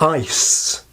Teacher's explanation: the vowel is truncated by that final S, which is a voiceless, or some people call it fortis sound. And this has the effect of shortening the vowel so that we get ice.